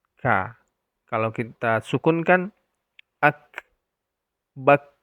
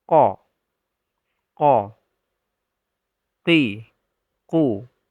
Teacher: Artinya, pangkal lidah menempel pada langit-langit mulut. Kaf adalah huruf ham . Sedangkan qaf adalah huruf jahr.